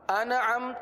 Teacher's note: زبر عم، انعم، انعم تو نون کا قلقلہ ہو جائے گا، نون پر قلقلہ نہیں ہوتا، نون میں آواز کو جمائیں گے، قلقلہ نہیں ہونے دیں گے